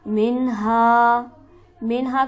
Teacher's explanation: منہا، منہا کو جلدی پڑھیں گے، نون ساکن ہے لیکن اس کے بعد حرف حلقی موجود ہے تو لہٰذا یہاں پر غنہ نہیں کیا جائے گا، اور ہا پر ہمارے پاس حرف مدہ موجود ہے لہٰذا اسے ہم کھینچیں گے 1 الف کے برابر